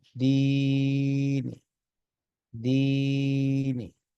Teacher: آخر میں معمولی سا جیسے زیر پڑی جا رہی ہے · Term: وقف بالروم